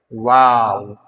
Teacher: দুই ঠোঁট গোল করে হবে ওয়াও